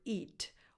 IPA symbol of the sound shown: i